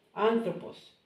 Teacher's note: Anthropos, and it has this intonation, so you put the intonation on the first syllable.